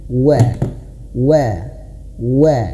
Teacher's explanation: Waw itu harus manyun, ya. Makhraj huruf waw ayah bunda harus diingat, dua bibir yang dimonyongkan. Wa.